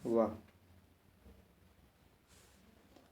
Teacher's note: तो वाह जो है ये किस में होगा, वाह जो है दंतोष्ठ मतलब दंत प्लस ओष्ठ, वह का उच्चारण स्थान दंत और ओष्ठ दोनों से लिया जाता है